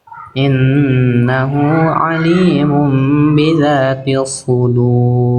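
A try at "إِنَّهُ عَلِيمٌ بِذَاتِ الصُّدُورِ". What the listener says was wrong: Tuh, huruf-huruf tebelnya udah bagus sekarang ya.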